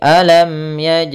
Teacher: mim mati harus dibaca dengan jelas tidak boleh ditahan